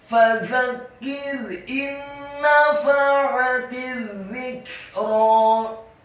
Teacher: ra-nya dibaca fathah dan tafkhim dua harokat. Karena harokatnya tegak dan setelahnya seperti ada ya sukun.